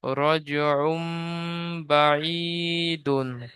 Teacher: তানবিনকে মিমের দ্বারা পরিবর্তন করে এক আলিফ পরিমাণ গুণনা করে পড়তে হবে